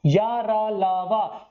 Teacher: तीन प्रॉपर्टी समझ में आ गई। स्वर और व्यंजनों के बीच उच्चारण होगा, वायु घुमड़कर बाहर निकलेगी, सघोष और कैसे होंगे, अल्प प्राण होंगे। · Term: अंतःस्थ व्यंजनों